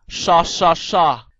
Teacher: 要卷住条脷，等同于普通话▁sh▁声母